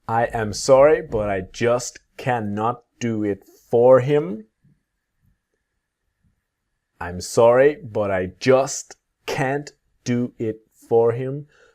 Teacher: the can't is the T never disappears and it's always strong